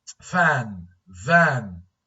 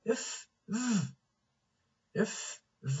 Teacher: So labiodental sounds. These are sounds made with the upper teeth and the lower lip.